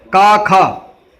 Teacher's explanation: इन ध्वनियों के उच्चारण में स्वर तंत्रियों में कंपन नहीं होता, अर्थात हम जब बोलते हैं तो कंपन नहीं होता। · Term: अघोष